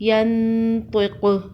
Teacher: یا نون زبر ین، طا زیر قی، ینطی، قاف پیش قو، ینطقو، وقف ینطق۔ وقف کی صورت میں قاف پر قلقلہ ہوگا، قاف حروف قلقلہ میں سے ہے۔